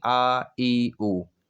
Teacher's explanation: इसके उच्चारण में हवा केवल मुख से निकलती है, नाक से नहीं निकलती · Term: निरनुनासिक